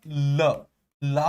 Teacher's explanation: ल, ला को भी बोलने में जिह्वा मसूड़ों को छूती है